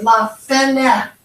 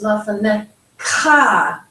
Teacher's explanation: So we might say lafanecha, but in Hebrew it's lafanecha. So we put more emphasis on the last syllable.